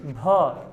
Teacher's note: हवा ज़्यादा निकल रहा है यार, महाप्राण हो गया।